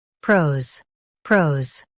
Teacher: Emphasize pro and keep Z light and quick.